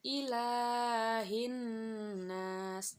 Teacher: huruf qamariah dan membacanya dengan mengirimkan atau mentasydidkan pada huruf hijaiyah sehingga alif lam tak terbaca meski tulisannya ada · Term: Alif Lam Syamsiah, Alif lam syamsiyah